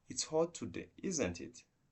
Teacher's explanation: I say it's hot today, then we check the information by using a falling intonation, say, isn't it?